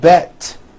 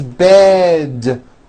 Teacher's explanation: bed has a voiced d ending it's not bet with an unvoiced T